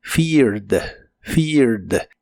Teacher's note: Es un verbo regular, así que termina con ed. En este caso no se pronuncia la E de casi al final